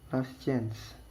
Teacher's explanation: chance you pronounce last change in state of the last change because the t doesn't get pronounced